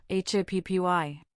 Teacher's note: happy has stress on the first syllable, hap py. computer has stress on the second syllable. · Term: syllable stress